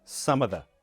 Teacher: with words like of, we just remove the F, and that sounds like a schwa sound